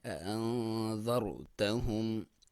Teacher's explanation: اسے اخفا بولا جاتا ہے، یعنی ناک میں سے آواز نکالیں گے، نون کے اوپر ساکن ہے.